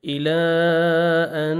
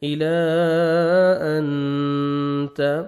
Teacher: نون ساکن کے بعد حروف اخفاء میں سے تا ہے، آپ نے نوز میں ساؤنڈ لے کے جانا ہے